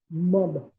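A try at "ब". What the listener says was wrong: It is not ma. Makara you are saying. How can it be ma? Like in the word amba. Ba.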